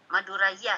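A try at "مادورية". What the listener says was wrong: Maduriyah. Kalau Madura, ra ujungnya alif buang aja. Alifnya langsung ra kasrah. Maduriya.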